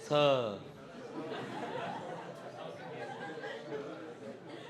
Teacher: દંતીય સ છે સસલાનો એ ડાયરેક્ટલી એકદમ ધીરે રહીને બોલવાનો છે બે દાંત બે જે ચોકટું હોય ને એની વચ્ચેથી નીકળવું જોઈએ